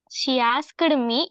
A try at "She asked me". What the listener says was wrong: Asked me. நீங்க அந்த ஈடிய வந்து உச்சரிக்க வேண்டாம், உடைக்க வேண்டாம். Asked me. She asked me. She asked me.